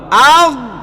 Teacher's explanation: মোটাও করবেন এবং দেখবেন গলার শেষ ভাগ থেকে উচ্চারিত হয় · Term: গইন